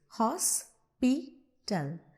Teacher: So, for example, when you are pronouncing hospital, you are pronouncing hos with more pressure and then pital on a softer note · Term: stress